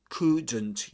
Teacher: You never pronounce the L there. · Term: silent L